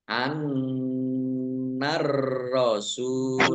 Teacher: Alif lam samsiah karena tidak dibaca langsung masuk ke huruf berikutnya yaitu ro. Ditandai roknya ada tasdidnya.